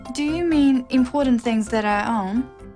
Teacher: It's a yes-no question with a rising tone.